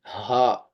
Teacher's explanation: ہا جو ہے یہ اس جگہ سے ادا ہوتا ہے جہاں سے ہماری گردن شروع ہوتی ہے، سینے کے پاس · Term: اقصی حلق